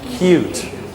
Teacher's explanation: So your tongue, when you go here, your tongue moves forward a little bit. It moves from the velum, makes a k, a plosive, and it moves forward a little bit. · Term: k sound